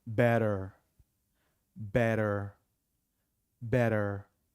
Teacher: more often than not the T becomes du